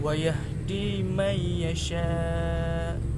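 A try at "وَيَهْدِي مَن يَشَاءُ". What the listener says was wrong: Hamzah bunyi.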